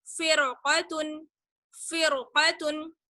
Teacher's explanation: रा साकिन के आगे है कौफ, हुरूफ मुस्तालिया में से कौफ, इसलिए रा साकिन को मोटा पढ़ेंगे